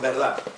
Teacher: es conocido el caso de la pérdida de la D final